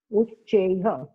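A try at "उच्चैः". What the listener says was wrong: Ucheha. no, it's not correct. Ucheha. Uchchaihi. Visarga, you cannot supply sound for Visarga as you like. Visarga should take the sound of the preceding vowel. Uchai. Uchai is there. I is there, therefore Uchaihi. I, when you say it is ending with the sound, E sound is there. Uchaihi.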